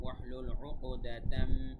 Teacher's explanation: উক এখানেও কলকলা হবে, কেননা কফ ত বা জিম দাল কলকলার 5 হরফের মধ্যে একটা এসেছে, উপরে জজম আছে, তাই উক কলকলা হবে।